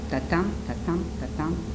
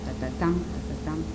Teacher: Tatam, tatam, tatam, that is iambic, and tatatam, tatatam, this is the anapestic.